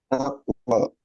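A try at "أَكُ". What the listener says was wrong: Kurang. Aku. Jangan ada nyekluknya. Aku, aku, aku. Gitu. Langsung aku satu kali. Aku. Itu ada nyekluk-nyekluknya ya sedikit.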